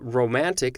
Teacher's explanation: the word romantic is an accentual amphibrac because the middle syllable is stressed and it's in between two syllables that are unstressed